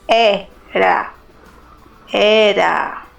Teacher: na palavra era, a letra E tem o som aberto e forte. Se lê era, era.